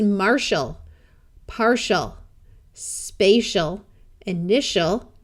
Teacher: Just like in the last suffixes, in these two, the TI and the CI will be pronounced sh, and the AL will be pronounced ul rather than a clear AL sound